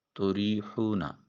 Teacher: را کے نیچے زیر ہے، بریک ادا کیا جائے گا۔ یا ساکن ہے اور اس سے پہلے والے حرف را کے نیچے زیر ہے، یا مدہ ہے، اس کو ایک الف کے قیم مقام لمبا کریں۔